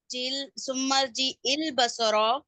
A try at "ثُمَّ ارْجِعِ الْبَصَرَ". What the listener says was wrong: عین ہے الف نہیں ہے ثم ارجع البصر